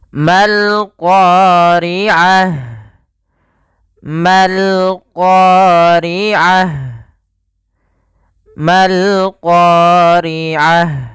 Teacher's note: ma-nya memang pada dasarnya ma ketemu dengan alif atau itu kita panjangkan